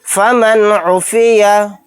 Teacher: یہاں پر نون ساکن کے بعد عین آ گیا تو یہاں پر بھی اظہار کا قاعدہ ہوگا، نون کی آواز کو ظاہر کر کے پڑھیں گے۔